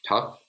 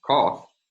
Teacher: We have an unrounded mid-low back vowel versus a rounded mid-low back vowel.